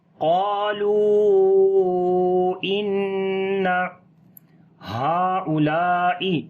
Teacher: ہا کو لمبا کریں گے، یہاں پر کھڑی زبر ہے، چھوٹی مد بھی ہے، کیونکہ ہا ایک لفظ ہے اور اولائی دوسرا لفظ ہے، اس وجہ سے ہا کے بعد حمزہ دوسرے لفظ کے شروع میں ہے، تو یہاں پر مد منفصل ہوگی، متصل نہیں ہے.